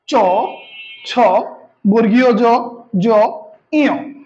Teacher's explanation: তারপরে আমরা যদি পরের বর্ণটি দেখি, চ থেকে ইয় প্রথম বর্ণ চ, নামকরণ করা হয়েছে চবর্গ, উচ্চারণ স্থান হচ্ছে তালু